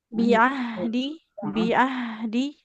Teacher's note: jadi huruf ainnya di tengah tenggorokan jangan seperti hamzah. Tidak bi'ah, tapi bi'ah.